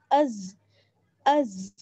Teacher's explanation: زبان کی نوک اور ثنایا سفلا کا کنارہ, اور اس کو تھوڑا سا سختی کے ساتھ پڑھتے ہیں, جبکہ زال جو ہے زال اس کو نرمی کے ساتھ پڑھا جائے گا, لیکن زا اس کو ہم سختی کے ساتھ پڑھتے ہیں.